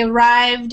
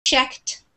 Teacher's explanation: he arrived, it has the D sound, but checked has more of like a T sound at the end.